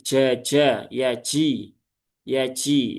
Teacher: Kalau kita mengucapkan dengan yaji, itu yang berperan adalah ujung lidahnya.